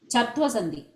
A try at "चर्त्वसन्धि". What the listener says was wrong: चर्त्वं no I heard चत्वं so चर्त्वं चर्त्वसन्धि उत्तमं भगिनि